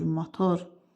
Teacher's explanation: İki hecalı söz vuruğu ikinci hecaya düşür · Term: Vurğu ikinci hecaya düşür